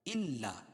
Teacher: حمزہ کو لام میں سختی کے ساتھ ملائیں کیونکہ لام پر تشدید ہے، اور تشدید والا حرف 2 مرتبہ پڑھا جاتا ہے، پہلے والے حرف کو مدغم اور دوسرے والے حرف کو مدغم فی.